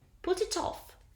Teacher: the final consonant sound migrates and becomes the first sound of the following word